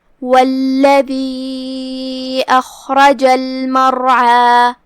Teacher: حرف العین کی ادائیگی حلق کے درمیان والے حصے سے. آخری میں ہم اپنی آواز 2 مد کے برابر لمبی کریں گے کیونکہ یہاں مد طبیعی ہے · حرف العین کی ادائیگی کا دھیان رہے، ہم اسے حلق کے درمیان والے حصے سے ادا کریں گے